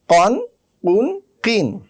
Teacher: সুপ্রিয় শিক্ষার্থীবৃন্দ, আমাদের পরবর্তী হরফ হচ্ছে কফ। কফ উচ্চারণ করতে হয় জিহ্বার একেবারে গোড়া থেকে